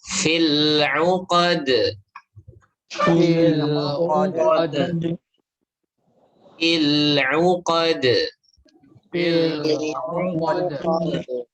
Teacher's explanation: Ya, itu dia syiddah. Dal selain syiddah dia juga jahar. Ya, makanya syiddah majhurah.